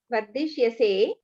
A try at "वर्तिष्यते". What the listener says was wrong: Bhagini, you are still pronouncing dakara. Dakara you are pronouncing takara. Vartishyate.